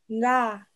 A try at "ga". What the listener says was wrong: Ga. Toi, tu dis nga. Non, non, non. C'est ga. Ga et non nga.